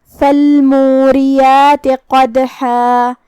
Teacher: قاف کی ادائیگی زبان کے جڑ اور تالو کے نرم حصے سے ہے. قاف حروف التفخیم میں سے بھی ہے تو ہم اسے بھاری آواز میں پڑھیں گے. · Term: حرف القاف